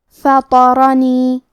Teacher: یہاں را کا حکم ہے تفخیم، تو ہم را کو موٹی آواز میں پڑھیں گے.